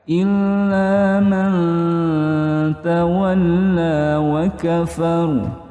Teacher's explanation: Rohnya di akhir tebal karena ada sebelum roh itu fathah.